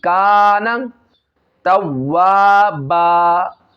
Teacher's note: کیونکہ یہاں پہ حرکت ہے، نون کے اوپر زبر ہے، تو زبر کو جو ہے بغیر کھینچے بغیر جھٹکا دیے پڑھتے، اس کو دراز نہیں کرتے، لمبا نہیں کرتے ، ڈائریکٹلی کانا توابا، توابا، تا کو واو کے ساتھ ملا